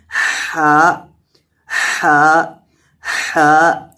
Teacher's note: یعنی اس کی درست ادائیگی کرنے کے لیے اس کے مخرج کو سمجھا جائے کہ اس کا مخرج ہے حلق کا آخری حصہ جو سینے کے ساتھ متصل ہے